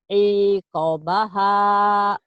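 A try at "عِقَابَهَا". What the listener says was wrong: Yang koknya panjang Bu. Iqabaha.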